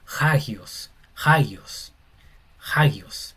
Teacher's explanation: Cuando la coma encima está mirando hacia la derecha, se pronuncia como una J o una h inglesa, no sería agio, sería hagios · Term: respiración áspera